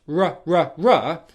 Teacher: saying the R sound where the tip of your tongue does not touch the roof of the mouth